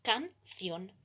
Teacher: y no se separan la división en sílabas es entonces canción el acento tónico está en la última sílaba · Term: aguda